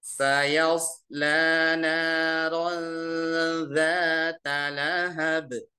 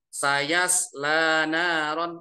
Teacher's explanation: ini huruf tipis masuk ke shad tebal